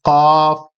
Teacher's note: زبان کی جڑ کے پاس سے یہ ادا ہوتا ہے